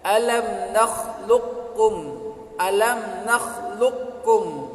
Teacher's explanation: kalau qa itu keluar dari aqsal lisan yang bagian atas, kemudian ka keluar dari aqsal lisan bagian bawah atau agak maju sedikit. Kalau salah satunya ini sukun kemudian bertemu dengan yang lain atau yang satunya, maka ini disebut dengan idgham mutaqaribain.